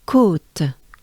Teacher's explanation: So the O is a bit sustained.